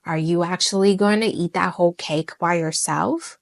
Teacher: You hear how my voice goes up at the end, and that upward movement signal curiosities or signal or curiosity, even a hint of disbelief, even like, hint of disbelief. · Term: rising intonation